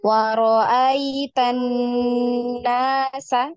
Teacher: nun dan mim yang ada tasydidnya itu ditahan ya, didengungkan, dengungnya itu ditahan 2 harokat